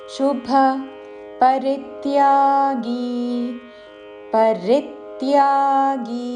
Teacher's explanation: పరిత్యాగి రీ మీద ఆఘాతతో రిత్యాగి చివరిలో గీ దీర్ఘము